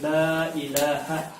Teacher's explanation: لا لام کے اوپر کھڑی زبر آپ نے پڑھا، اس کی آواز بھی دگنی ہو جاتی ہے